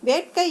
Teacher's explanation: வேட்கை அப்படிங்கிறதுல அந்த ஐ வந்து உங்களுக்கு கடைசியாக வந்திருக்கு. அப்போ வந்து அது அரை மாத்திரை. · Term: ஐகார குறுக்கம்